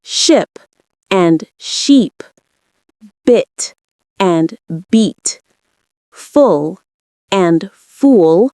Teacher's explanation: The difference between ship and sheep, bit and beat, full and fool, lies in vowel length and tension.